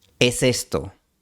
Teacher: Las palabras se conectan de dos formas. Primero, la S final de es se mueve al inicio de esto.